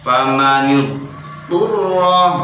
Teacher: berarti lidahnya dari tempatnya dot kemudian pindah ke tempatnya to. Lidahnya harus naik kemudian turun.